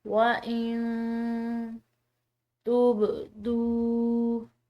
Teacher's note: آگے دیکھیں، وَإِن تُبْدُوا، نون ساکن کے بعد حروف اخفاء کا حرف ہے تو اس کی وجہ سے اس نون ساکن کو مخفی پڑھیں گے، اور یہ با حروف قلقلہ میں سے اس کو ہلاتے ہوئے ادا کریں گے